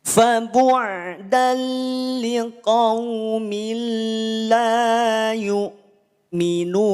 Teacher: Cara bacanya leburkan, masukkan saja pada huruf lam tanpa disertakan gunnah. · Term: idgham bila gunnah